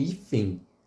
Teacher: parece ter um som de I, esse N final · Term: semivogal